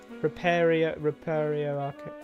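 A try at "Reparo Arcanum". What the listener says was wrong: That's Repario. No, that's not accent. Even in American English, you don't go ER. But she's gone Repario Arcanum every time. Even when she was down, it was re-recorded with Repario Arcanum.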